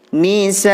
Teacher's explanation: Sah di sini hukum bacaan mad wajib muttasil. Panjangnya 5 harokah karena huruf mad yang berupa alif bertemu hamzah dalam satu kalimat.